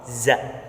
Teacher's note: ujung lidah berada pada halaman dua gigi seri bawah sehingga suara za keluar di antara dua gigi seri atas dan bawah.